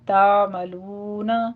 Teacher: تعملون میں عین کو آپ نے جھٹکا نہیں دینا ، تعملون نہیں کہنا، تعملون، لو میں واو مدہ ہے، بصیر